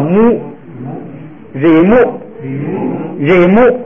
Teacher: 边接的前边乌很小，后边也就不再张大了。秋柯。第三个是瑞摩，就是如果按照这个正常的规则读音呢，后边这个摩是低声调，低声调在第二音节是不允许从低往起升的，所以它就变成平声，就变成了瑞摩。由于前边是一个闭音节，一乌吁是闭音节嘛，是闭音节，后边这个喔呢就读成乌，就变成了瑞木。哦，对了，这个地方介绍一下它这个表示方法。你看后边那个汉语拼音呐，它那个喔还是写的喔，但是在上边呢带一个小帽子，带一个小三角。带小三角的意思是什么？是把它压制一下啊，这个让它嘴压低一点，哎，对， 让那个嘴呢再闭一点，不要把嘴张太大，哎，喔就变成了乌